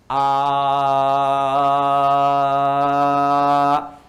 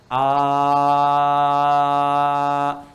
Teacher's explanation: tidak ada sekat, udara mengalir saja, mengalir. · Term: hamzah